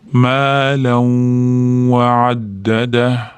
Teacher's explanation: tanvindan keyin yoki sukunli nundan keyin kelsa tanvinni ham sukunli nunni ham ichiga kirgizib yuborib g'unna bilan ya'ni dimog'imizda ozgina to'rt beshtacha ushlab turib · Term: g'unnali idg'om